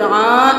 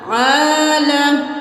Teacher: अब आलमीन नहीं करना, आइन खड़ी ज़बर आ, एक अलिफ के बराबर खींचना है